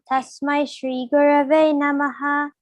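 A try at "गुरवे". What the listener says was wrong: So you have to specify that ra properly, okay, Kanna?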